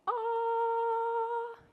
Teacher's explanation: when you say a high note like ah, your vocal folds get long and tall